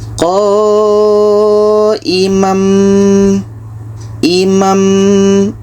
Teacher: bunyi tanwin sudah enggak ada, kita pindahkan kepada mim. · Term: iqlab